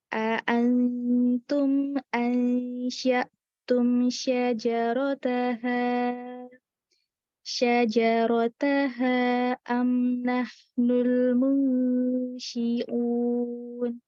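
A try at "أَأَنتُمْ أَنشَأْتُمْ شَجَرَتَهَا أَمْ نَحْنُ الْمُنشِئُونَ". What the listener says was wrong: Mad ism fasilnya dibacanya 4 ya. Ini tadi nanggung 2 enggak, 3 4 enggak, 3. 4 ya.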